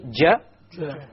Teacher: You notice that the entire middle portion of the tongue is being used. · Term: middle of the tongue